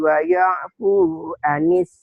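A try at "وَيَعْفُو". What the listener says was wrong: Woyo, jangan woyo. Waya, woyo. Jangan woyo, waya.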